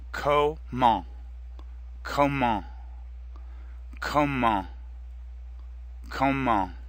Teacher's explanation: The final T is silent, and before that the EN makes the same nasal sound as in quand.